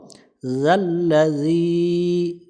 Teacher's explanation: বামে ইয়া সাকিন এক আলিফ টানতে হবে এক আলিফ টান দিব জাল অক্ষরটা জিহ্বার আগা থেকে নরম করে পড়বো পাতলা করে পড়বো